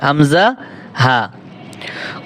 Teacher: কন্ঠনালীর শুরু হতে দুইটি হরফ উচ্চারিত হয়